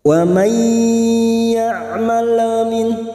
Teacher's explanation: Lam sukun hanya masuk, tidak boleh dipantulkan.